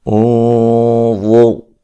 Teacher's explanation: انظر نون ساکن کا موٹا اخفا ہے